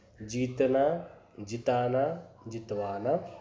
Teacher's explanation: दीर्घ का ह्रस्व हो जाता है। अब पहले दीर्घ वेलांटी है, ज को दूसरी वेलांटी मतलब यह ज क्या हो गया, दीर्घ हो गया, उसे हमें ह्रस्व करना है।